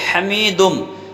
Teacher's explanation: تو یہاں پر ہم تنوین کا حروف ارملون میں ادغام کر دیں گے، یعنی اس نون تنوین کو میم سے ملا دیں گے · حمیدم، ہا کو درمیان حلق ادا کریں گے، بغیر کھینچے پڑھیں گے، میم پر زہر ہے اس کے بعد یا ہے تو یا مدہ ہے یہاں پر، تو میم کو ایک الف کے برابر ہم کھینچ کر پڑھیں گے